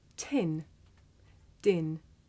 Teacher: did you notice how the puff of air at the beginning of tin makes the paper move